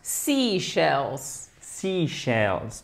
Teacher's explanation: il faut bien faire l'accent tonique sur la première syllabe